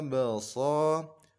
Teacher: Kemudian ada huruf ba, termasuk salah satu huruf qalqalah. Ketika sukun maka hendaknya dipantulkan. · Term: qalqalah sughra